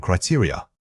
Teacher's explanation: this word has an important stress pattern starting on the second syllable. It is not a single stressed unit, it's built around 3 smaller vowel sounds.